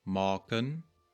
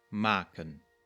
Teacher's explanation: I tend to produce a dark vowel, maken, but in other accents it might be more bright